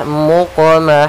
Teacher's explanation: suara qafnya memantul tapi tidak ada tambahan huruf hamzah. Jangan muqmahun. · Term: qalqalah